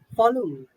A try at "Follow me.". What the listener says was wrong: No, it's sounding a little more sweeter. If I just hear you, it's sounding like it's a polite statement. Follow me, sir. It's like that. It has to be very dictative. Follow me, everyone.